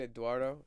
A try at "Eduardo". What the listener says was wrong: But you don't say it like it's Ed, though. Eduardo. There's no W when you say it.